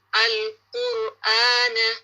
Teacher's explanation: یہاں پہ کیا ہے, را سکون بفور اٹ دمہ, را سکون ہے اور اس سے پہلے کیا ہو, دمہ ہو, تو آپ نے را کو پھر بھی ہیوی پڑھنا ہے. جیسے ہے القرآن، را کو ہیوی کریں گے